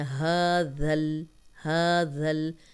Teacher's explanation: تو ذال کو نرم پڑھیں گے، سیٹی کی آواز نہیں آئے گی۔ اوپر سامنے کے جو 2 دانت ہیں یا دونوں دانتوں کو ملا کے درمیان میں زبان رکھ کے ادا کریں، سیٹی نہیں کی آواز نہیں ہوگی تو یہ زا نہیں بنے گا، ذال ہی رہے گا۔